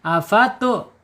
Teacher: Tapi di sini ada huruf hamzah ya. makhraj tenggorokan bawah ya afatu tahan tidak mengalir karena sifatnya asyiddah